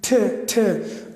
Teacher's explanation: it is pronounced from just behind the teeth, just behind the teeth.